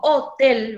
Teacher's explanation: se carga la voz en la última sílaba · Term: palabra aguda